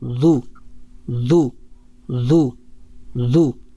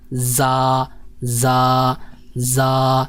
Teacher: تو اعوذ میں جو حرف ہے وہ ہے ذال ہے، تو یہ نرم حرف ہے، اور جو زا ہے یہ سخت حرف ہے، تو ذال کی ادائیگی کے لیے یہ ذرا تھوڑا سا اہتمام کر لیا جائے کہ زبان کا جو سامنے والا کنارہ ہے اوپر کے دانتوں کے کنارے کے ساتھ نرمی سے لگائیں گے تو یہ ذال ادا ہوگا، اعوذ ذو ذو اعوذ ذو ذو اعوذ.